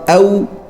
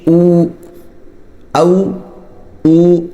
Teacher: वाव जो है ना वाव दोनों होठों से निकलना चाहिए ठीक है वाव इस तरह ना निकाले जिस तरह फा निकलती